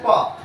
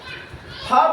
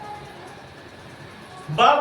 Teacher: हम प बोले तो हमारा दोनों ओठवा सट गया। फ बोलेंगे तब भी दोनों होठवा सट जाएगा। ब बोलेंगे तब भी सट जाएगा।